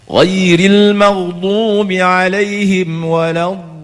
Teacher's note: Rakhawah ni suara tak boleh diputuskan. Artinya semasa tuan-tuan sebut walad itu ada lagi suara. Sebenarnya suara tu ada. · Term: sifat rakhawah